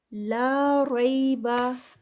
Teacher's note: لا پہ 2 کاؤنٹس، الف مدہ ، ریبا میں جو ہے یہ یا لین ہے، تو اس